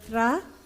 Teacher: should end with at least one let's go with TR so tra is Dental t plus ra